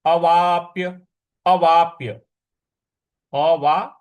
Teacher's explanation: अवा और जो प है उस पर हमको थोड़ा सा बल लगाना है